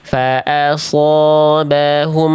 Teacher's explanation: Ini mim sukun itu ditahan kalau hukum tajwidnya ikhfa syafawi atau idgham mimimi. Tapi kalau mim sukun bertemu selain mim dan ba itu di sini ada huruf sin. Berarti izhar syafawi-nya jangan ditahan cukup dijelaskan aja.